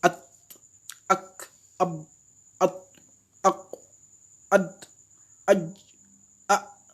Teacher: Vous voyez qu'il y a un blocage. C'est-à-dire que le son ne continue pas à sortir lors de la prononciation. Il y a un blocage net.